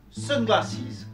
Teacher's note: glasses will be stressed on its first syllable with a secondary stress